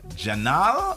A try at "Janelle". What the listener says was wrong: Janelle. but they don't got the nail. They got the now.